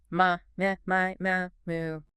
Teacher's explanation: The M sound forces the vibration to the lips. It's very frontal. Right. So by cycling through the vowels, ma, my, you're practicing keeping that forward resonance while changing the shape of your mouth.